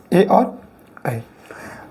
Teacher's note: ऐसे स्वर जिनका उच्चारण हम कंठ से भी करें और तालु से भी करें, दोनों से मिलकर करें, तो वो कौन कौन है? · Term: कंठ तालब